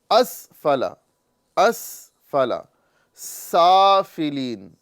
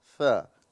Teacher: اس سین کی ادائیگی میں سیٹی نکلے گی اور سا کی ادائیگی میں سیٹی نہیں نکلے گی، اس میں صرف ہلکی سی ہوا پاس کرنا ہوتا ہے، سا، ٹھیک ہے، اور یہاں پر مکمل سیٹی کی ادائیگی ہوگی۔